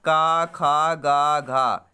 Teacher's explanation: 5 वर्ण है कंठ से उच्चारण वाले